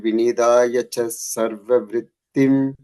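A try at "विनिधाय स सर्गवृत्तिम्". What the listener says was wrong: The third line, like Vinidaya Sa Sarga. I think I'm hearing a cha sound. It's a sa sound there. Vinidaya. Vinidaya Sa Sarga Vridhim.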